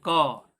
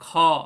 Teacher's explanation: क का जो उच्चारण करते हैं निश्चित रूप से उसमें लंबा श्वास नहीं लेना पड़ता। और ख बोलते हैं ख, मुंह ज्यादा खुल जाता है, ज्यादा श्वास लेना पड़ता है